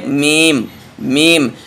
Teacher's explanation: जब आप मीम पढ़ेंगे तो दोनों होंठ मिल जाएंगे